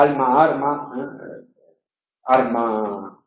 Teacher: confusión de vibrante y líquida en posición final de sílaba